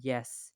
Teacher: After that, we have the palatal sound which is the middle of your tongue moves close to the hard pallet, but it doesn't touch it. You can hear it in yes.